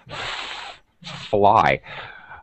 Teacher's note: F sound, top teeth, bottom lip. The unvoiced, okay, no vibration, is an F.